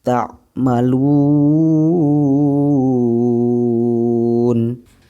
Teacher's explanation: cara membacanya itu dipanjangkan 2-6 harokat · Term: Mad Arid lissukun